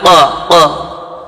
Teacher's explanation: Huruf qaf itu berada di belakang lidah